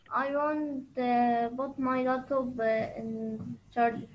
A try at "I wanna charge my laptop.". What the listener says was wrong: خليك بقى American. I want to. يبقى I wanna.